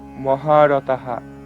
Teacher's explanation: বিসর্গ থাকলে হ আর বিসর্গের আগে যদি আকার থাকে তখন হ এর উচ্চারণটা হা করি আমরা